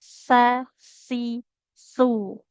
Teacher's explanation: Kalau huruf sa, ujung lidah tempelkan ke ujung gigi seri atas.